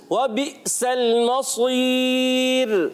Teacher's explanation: مصیر میں را کو باریک رکھنا ہے